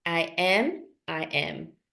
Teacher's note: El que ustedes dijeron, I am. Es esta cosa rara entre una A y una E, ¿no? It's like, I am. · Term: E sound